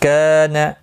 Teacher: کا الف مدہ ہے، ایک الف کی مقدار کے برابر کھینچ کر پڑھیں گے